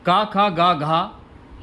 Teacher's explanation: क ख ग घ यह आपके कंठ से बोले जाने वाले वर्ण है